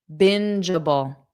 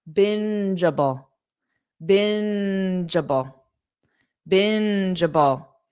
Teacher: So, the syllable stress is on the first part.